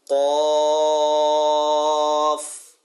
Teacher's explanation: تو قاف بھی یہ پر حروف کے اندر سے ہے تو قاف کو پر بھی کرنا ہے اور اس میں مد کو بھی قائم رکھنا ہے